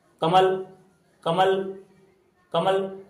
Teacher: तो लास्ट में अ नहीं निकलेगा। जैसे कमल, कमल, कमल, तो आपका ये लप है ना, जीभ ऊपर चढ़ जाएगी।